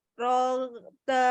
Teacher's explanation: Jangan dipanjangkan ro fathahnya, tapi satu harokatkan saja.